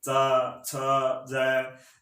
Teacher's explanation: तो आप गौर करना और बैठ करके ध्यान से इनको बोलना, तब देखोगे कि जैसे ही आप चाय बोलोगे, जैसे ही आप चाय बोलोगे तो जिह्वा है वो झट से ऊपर चली जाएगी और तालु से स्पर्श करके आएगी। च छ ज, जिह्वा है वो तालु से स्पर्श करके आएगी